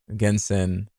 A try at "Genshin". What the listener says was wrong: Genshin. Why'd you say sin?